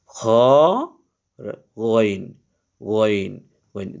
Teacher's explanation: তো আইন আর গইন, এই আইন এটাও গলার মধ্যে একটু চাপাইয়া পড়তে হয়, হায়ের মতো, হা যেরকম চাপাইয়া পড়তে হয়, এই আইন এটাও গলার মধ্যখান থেকে পড়তে হয়, হলকের মধ্যখান থেকে। আর গইন, এই খ আর এই গইন এদের হলকের শেষ থেকে পড়তে হয়